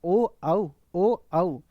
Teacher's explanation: ओ औ लिप भी चलता है और कंठ भी चलता है। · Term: कंठ ओष्ठ